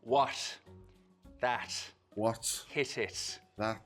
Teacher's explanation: It's a T sound made with a very soft closure at the tip of the tongue, or not even really quite a full closure at all. There's a slit left for the air to escape through. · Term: Irish slit T